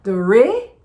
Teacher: A tônica tá em re. Do re. O flap T aqui de novo.